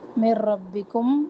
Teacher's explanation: یہاں پہ ایک نشانی کا ذکر ہے. من ربکم نون ساکن کے بعد را ادغام بلا غنہ